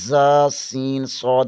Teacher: Set number 12 حروف صفیریہ یعنی سیٹی والے حروف: ز، سین، صاد۔ زبان کی نوک ثنائے سفلی یعنی نیچے والے دانتوں سے لگے تو ز، سین، صاد ادا ہوتے ہیں